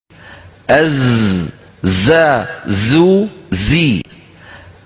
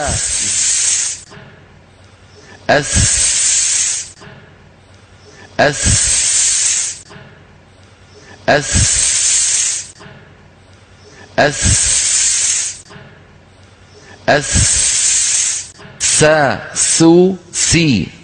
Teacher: آواز اوپر اور نیچے کے سامنے والے دانتوں کے درمیان سے نکلتی ہے